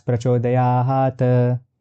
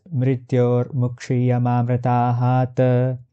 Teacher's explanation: all other consonants that are in reality there in the halanta form end up getting pronunciated as complete consonants